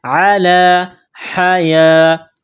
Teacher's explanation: یا کے اوپر کڑا زبر ہے، ایک الف کے برابر کھینچیں گے ، یہ گول تا ہے، تا کے نیچے دو زیر تنوین · ہے، سین کو باریک کرنا ہے، احرص الناس علی حیاہ، علی، لام کے اوپر کڑا زبر ہے، ایک الف کے لمٹ میں کھینچنا ہے